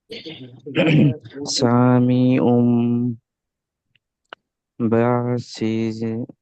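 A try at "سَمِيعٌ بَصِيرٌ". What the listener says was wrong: সামিউম বাসির। উমটা গুন্না করছেন না কেন? সামিউম বাসির।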